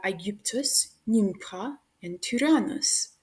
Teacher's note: Short Y is pronounced pretty much exactly the same as long Y, but it's just a little shorter